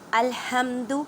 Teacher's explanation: اس ہا کو ادا کرتے وقت خیال رکھیں کہ حلق کے درمیان والے حصے سے ادا کریں